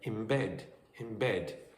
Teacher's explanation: Instead of in bed, you might get in bed, in bed. So you might get a m sound where the final n sound of in changes to match more closely the beginning b sound of bed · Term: assimilation